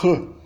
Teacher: Quando ela é final, ela pode permanecer um tap em São Paulo e no sul do Brasil, mas no Rio de Janeiro e no Nordeste do Brasil ele vira também uma fricativa glotal, R. E no dialeto caipira, adicionalmente, a gente tem a realização retroflexa.